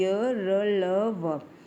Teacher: ये आपके 4 अंतस्थ व्यंजन। इन्हें जब हम बोलते हैं अंदर से हमारी जीभ अब मुड़ जाती है तो ये अंतस्थ व्यंजन होते हैं।